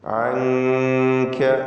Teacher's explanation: അൻക, ഈ പദത്തിൽ സാക്കിനത്തായ നൂൻ ഇഖ്ഫ ഹഖീഖി നൽകി മറച്ചു മണിക്കണം, അവ്യക്തമാക്കി മണിച്ചുകൊണ്ട് ഉച്ചരിക്കുക